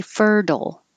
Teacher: you can change this t to a d and say fertile or keep the t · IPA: /ɛr/